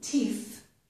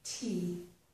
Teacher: So a native speaker might think that you are saying this word, tea, which is something that you drink. So it's important to pronounce the final th, teeth, to distinguish it from this word, tea. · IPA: / θ /